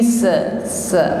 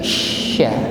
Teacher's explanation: Bukan sekedar min ayyi sa, bukan, tapi sya. Lebih menyebar udaranya di dalam mulut. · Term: huruf shin